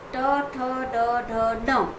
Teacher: मूर्धा माने जब हम, आप देखिए, कोशिश बोल के देखेंगे कि जब आप ट बोलेंगे तो आपकी जीभ थोड़ी सी मुड़ती है, है ना। हम जब ट बोलते हैं तो हमारी जीभ अंदर की ओर फोल्ड होती है, मुड़ती है। तो उस जीभ के मुड़ने के बाद जो उसके पीछे का जो स्थान है, और वो स्थान जब हमारे ऊपर तालु से स्पर्श करता है तो उसको कहा जाता है मूर्धा, है ना। · माने ट वर्ग रु र श, इतने हम मूर्धा से बोलते हैं